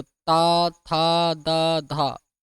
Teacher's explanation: ओठ का प्रयोग नहीं होता, केवल दांतों का प्रयोग होता है।